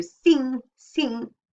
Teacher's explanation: the vowel goes a bit nasally